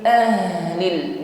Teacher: huruf ha sukun, sifatnya rakhawah, alirkan bunyi hurufnya, ya. Ahlil, bukan tetapi ada suara yang menggema di aqsal halqi, tenggorokan paling bawah.